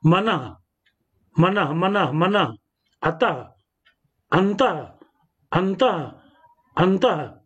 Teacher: पहले शब्द की अंतिम ध्वनि विसर्ग है, जिसका उच्चारण हम हा रूप में करते हैं।